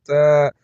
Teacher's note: تا کے اوپر کھڑا زبر ہے ایک الف کے برابر کھینچ کر پڑھیں گے